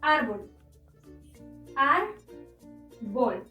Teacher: La sílaba tónica o que suena más fuerte se encuentra en ar, es decir, la penúltima sílaba. Y como no termina en N, S o vocal, debemos colocarle la tilde.